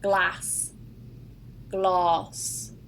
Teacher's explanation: in the north it's a very open sound and very short